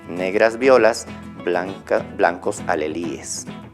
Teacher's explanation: Esa parte de líes debía ser una sola, pero lo estamos separando, eso es diéresis.